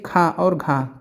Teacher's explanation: क्योंकि खा और घा में ज़्यादा समय लगता है तो इनको हम महाप्राण कहते हैं